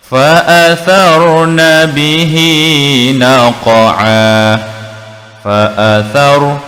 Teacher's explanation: Fa athar, ra yang bertanda sakinah. Apabila sebelumnya huruf baris di atas, sebutan ra ini kita bunyikan tafkhim, lebih tebal.